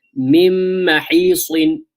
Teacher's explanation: the noon and mim are merging with one another, and there is a nasalization for two harakas. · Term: idgham with ghunnah